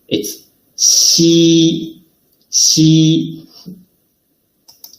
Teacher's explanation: When Xi is pronounced, the surface of tongue approaches the hard palate without reaching it, leaving a gap in between